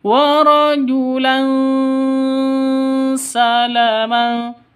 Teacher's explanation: tanwin bertemu dengan sin cara bacanya samar didengungkan siap-siap ke huruf sinnya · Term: ikhfa Hakiki, Ikhfa hakiki